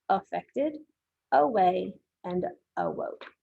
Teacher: we have the letter A that makes the schwa sound in affected, away, and awoke